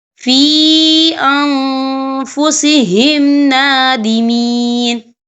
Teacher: یہاں دیکھیں فی، یہاں پہ یا مدہ ہو رہا ہے، یا ساکن ہے، یا ساکن سے پہلے زیر ہے اور اس پر چھوٹی سی مد بھی ہے تو ہم یہاں 3 یا 4 حرکت کے برابر کھینچ کے پڑھیں گے